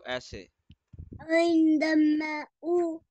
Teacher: आइन को गहरा करें गले के दरमियान से